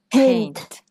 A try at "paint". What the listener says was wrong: No, no, no. Không được là pen, pen. Là paint. Paint.